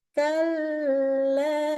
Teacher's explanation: waktu ketemu dengan lam bertasydid, kita tahan lama-lama